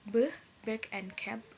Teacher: Oral passage is blocked by closing the lips or bilabial.